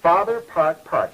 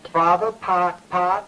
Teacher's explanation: stout retraction of the tongue, sort of curled back when you say park and park.